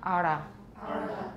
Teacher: If you curled up your tongue from the inside coming out from the back to the front, that's a flap